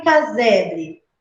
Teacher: Você deslocou o acento de cá para zé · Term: acento fônico